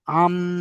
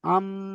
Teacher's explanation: নুন সাকিনকে মিমের সাথে মিলিয়ে এক আলিফ পরিমাণ গুণনা করে পড়তে হবে। যেমন আম, যেমন আম, এই যে ধরে রাখছি মিমটাকে, এটা গুণনা হয়ে যাচ্ছে আম। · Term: ঈদগামে নাকিস